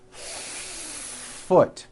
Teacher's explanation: you need to hear the air friction when practicing try to give the F one beat · Do you see how long I am holding that F?